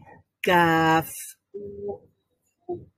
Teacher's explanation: কাফ উচ্চারণ করার সময় একটা বাতাস বের হবে মুখ থেকে,